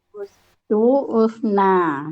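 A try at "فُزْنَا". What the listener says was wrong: Bukan u, tetap fu. Fustu. Kok jadi u? Fustu, fusna. Nah, jadi fus terus ya dari pelaku huwa sampai ke bawah fus terus saja. Fus dari huna ke bawah fus ya.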